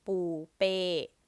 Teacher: another person's name, ปูเป้ mid and falling